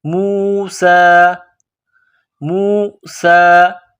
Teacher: وَإِذْ قَالَ موسیٰ, میم واو پیش مو, سین میں سیٹی کی آواز پیدا کرنی ہے, سین کو باریک کرنا ہے. سین کڑا زبر سا, موسیٰ, موسیٰ.